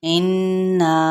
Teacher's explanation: انا یہاں پہ غنہ کرتے ہوئے الف مدہ کرنا ہے، اور ساتھ میں یہ دیکھیں اوپر مد نظر آ رہی ہے اور آگے بھی حمزہ، یعنی یہ مد منفصل ہے، تو اس کو ہم نے 4 حرکات کے برابر کھینچتے ہوئے، یعنی 2 الف کے برابر اسے کھینچنا ہے۔